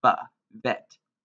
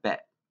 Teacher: a bait without a dagesh is pronounced va, vet, instead of bet